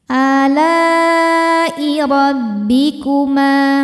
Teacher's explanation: ro dibaca tafkhim karena berharokat fathah, maka ro-nya tebal.